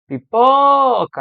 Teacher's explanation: a parte mais forte é o pó